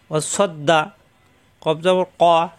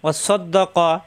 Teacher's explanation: জিহ্বার গোড়া থেকে ক হবে